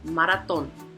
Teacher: three syllables so the accent is going to be on the third